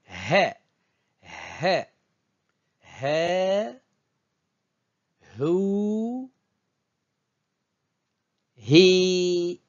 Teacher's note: Ce n'est pas le H muet du français, c'est plutôt le H aspiré de l'anglais.